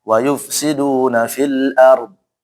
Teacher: al-ard itu tetap dibaca ra-nya tebal, dotnya juga tebal ya.